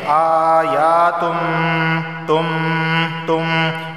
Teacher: تنوین کے بعد میم آیا ہے اور میم حروف یرملون میں سے ہے، تو ادغام اور غنہ دونوں ہوں گے